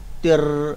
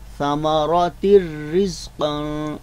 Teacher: रा जो है इसको हमने हिलाने से बचाना है, यानी जुम्बश नहीं देंगे, तिर ऐसे नहीं पढ़ेंगे, बल्कि आवाज़ को गिरफ्त करके पढ़ेंगे।